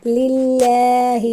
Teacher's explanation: للہ میں اللہ تعالیٰ کے نام کو باریک پڑھیں گے۔